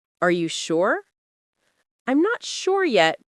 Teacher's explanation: When sh connects with other words, the lips stay rounded and the sound flows.